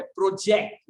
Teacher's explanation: जेक्ट पे हम ज्यादा वजन देते हैं